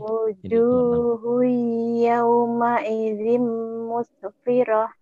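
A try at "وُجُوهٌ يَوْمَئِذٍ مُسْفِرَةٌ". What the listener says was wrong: Nah, hati-hati jangan muse ya. Jangan dikolkolahkan karena ini bukan huruf kolkolah. Huruf kolkolah kan cuma berapa?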